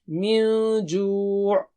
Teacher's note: میم پر جو ہے تشدید ہے تو غنہ کریں گے ہم، ڈبل سٹریچ کریں گے، دو حرکت سے پڑھیں گے. من جوع، یہ نون کو چھپائیں گے ہم، یعنی ناک سے آواز نکال کر ڈبل کھینچیں گے